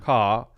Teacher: you can hear there that it's an open Sound C A almost like there isn't an R there it's very open